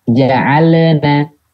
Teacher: Memperjelas huruf lam dengan melebihkan suaranya. Terpantul. Jadi terdengar seperti terpantul.